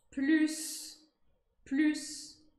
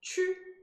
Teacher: basicamente a gente vai fazer a boca do U, então vai fazer um biquinho e projetar o som I lá dentro, aí vai sair esse U, que é característico do francês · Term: som U